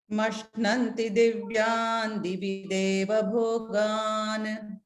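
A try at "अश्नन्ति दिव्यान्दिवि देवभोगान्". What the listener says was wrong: It is not mashnanti, it is ashnanti, because surendra lokam, the ma has been swallowed there. So what remains is ashnanti.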